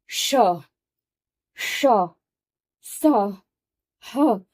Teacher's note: तब हमने य र ल व बोला। लेकिन श ये उष्म वर्ण को बोलने के लिए हमें सांस को बाहर की तरफ फेंकना पड़ता है।